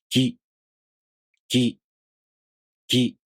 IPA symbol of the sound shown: gʲi